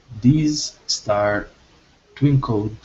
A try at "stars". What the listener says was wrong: Okay, give me a good S on stars. These stars twinkled.